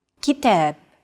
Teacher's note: Notice that the second syllable is stressed. It's pronounced longer and louder, while the first and final syllables are shortened.